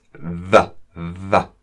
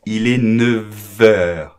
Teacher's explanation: la F se transforma con el sonido como una V en francés